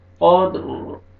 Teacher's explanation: قد، را، جب وقف کریں گے سٹاپ کریں گے را ساکن ہو جائے گا، اور را کو پر کریں گے کیونکہ قاف کے اوپر زبر ہے، دال ساکن اس سے پہلے زبر ہے، را کو پر کریں گے۔